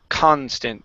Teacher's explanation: Less breath on that ka. You're really attacking that word. Constant. You want to attack the N.